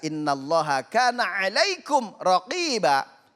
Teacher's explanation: Nah nunnya bertasydid wajib dibaca dengung.